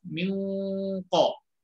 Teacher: ketika kita ikhfa itu posisi lidah, bahkan posisi makhraj huruf sudah masuk ke qaf. Min ko. Maka otomatis ya, ikhfa-nya akan tebal.